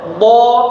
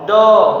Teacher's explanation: Kalau berubah jadi huruf dal, jadi do, berarti yang ditekan bagian depan.